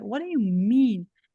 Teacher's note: Como essas duas palavras aqui, elas não são fortes, elas são átonas. A força está no mean, a gente vai correr.